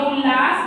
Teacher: ता के बाद ला आने के कारण ला हो गया है